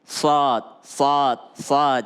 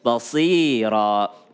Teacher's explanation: lidah kembali menyentuh gigi geraham ketika menyebut sad